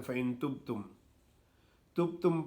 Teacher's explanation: پا کی آواز آتی ہے لیکن انہیں سمجھ نہیں آتی کہ ہم با پڑھ رہے ہیں یا پا پڑھ رہے ہیں